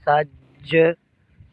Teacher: جیم حرف کلکلہ ہے اور مشدد ہے، کلکلہ جماؤں کے ساتھ کریں گے۔